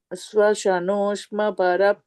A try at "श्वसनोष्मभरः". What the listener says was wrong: in the second line, swashanoshma bharas is sound has to come because the visarga is there, right? That will become is.